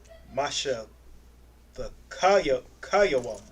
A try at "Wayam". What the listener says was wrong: Masha Thakwayam. Masha Thakwayam. Wayam. You saying it backwards. You saying Yawam instead of Wayam.